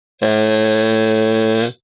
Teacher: Ada yang bacanya antara fathah dengan imalah baina-baina ya. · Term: takqlil